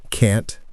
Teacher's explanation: American can't has a clear t sound.